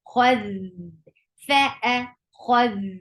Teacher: Kha will get sifa of rakhawa, and kha is heavy.